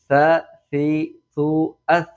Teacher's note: സ ഉച്ചരിക്കുമ്പോൾ നാവിൻറെ തല മേലെ മുൻപല്ലിന്റെ തലമ തട്ടിയിട്ടാണ് ഉച്ചരിക്കേണ്ടത് · ഇനി നമുക്ക് അടുത്ത അക്ഷരമായ സയിലേക്ക് പോകാം. സ ഉച്ചരിക്കുമ്പോൾ നാവിന്റെ തല മേലെ മുൻപല്ലിന്റെ തലമ തട്ടിയിട്ടാണ് ഉച്ചരിക്കേണ്ടത്. സ, സി, സു, അസ് എന്ന് വളരെ സിമ്പിൾ ആക്കിയിട്ട് സബ്ബത്ത്, അങ്ങനെ വളരെ സിമ്പിൾ ആക്കിയിട്ട് തന്നെ പറഞ്ഞാൽ മതി.